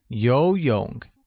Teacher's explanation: Note that 游泳 uses a mid-rising tone on the first O and a falling rising tone on the second O